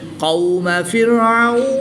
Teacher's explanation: قوم فرعون، واو ساکن سے پہلے عین پر زبر ہے تو یہاں پر واو لین ہوگا. واو لین کے بعد نون کی زبر کو وقف کی حالت میں ساکن کر دیں گے تو یہاں پر مد لین عارض ہوگی، 2 سے 3 الف تک کھینچ کر پڑھیں گے